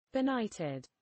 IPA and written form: bɪˈnaɪtɪd (benighted)